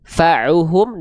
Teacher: Fa'uhum dari tengah tenggorokan kita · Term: ain